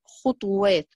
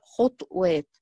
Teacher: ناس تقرأ خطوات بضم الطاء، وناس تقرأ خطوات بإسكان الطاء